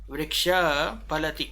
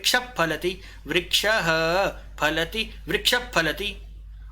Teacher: ठीक है, जैसे मान लो वृक्षः फलति, ये लिखा हुआ मिल गया, तो विसर्ग के आगे हमें फ मिल गया, तो हम इस वृक्ष जो विसर्ग को आधा करके भी बोल सकते हैं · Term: उपपदमानीय